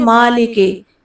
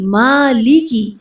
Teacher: مالکی، مالکی یوم الدین میں کیا ہے، مالکی میم کو لمبا کر کے تھوڑا سا پڑھنا ہے، کھڑی زبر ہے مالکی. لام کو مجھول نہیں پڑھنا، لے نہیں پڑھنا. اکثر کیا پڑھتے ہیں مالکے، نہیں مالکی.